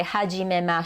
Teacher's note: the she syllable is pronounced just sh you drop the e